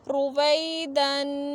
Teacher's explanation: را پیش رو، واو زبر یا ساکن وی، روی، دال دو زبر الف دن، رویدن۔ را پہ پیش ہے تو را کو موٹا پڑھیں گے، جب زبر اور پیش آئے تو را کو موٹا پڑھیں گے، زیر آئے تو باریک پڑھیں گے، رویدن۔